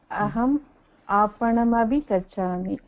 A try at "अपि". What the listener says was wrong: अभि இல்ல அபி.